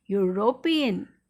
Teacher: such words which though they start with vowel but they don't have a vowel sound, the sound is of year, that is Y. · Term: sound of Y